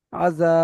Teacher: জবার যা এখানে আলিফের ডান দিকে যাবার এসেছে আলিফ মাদ্দা হবে আলিফ মাদ্দাকে এক পরিমাণ টান দিয়ে পড়তে হবে